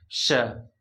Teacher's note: इसको हम लोग बोलते हैं तालव्य स मतलब इसकी उच्चारण तालो से होती है श जीव जो है तालो में सटनी चाहिए ये जो है